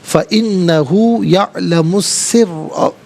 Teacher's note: را پر زبر ہے، را کو پر کر کے پڑھیں گے، مشدد ہے، جماؤ کے ساتھ پڑھیں گے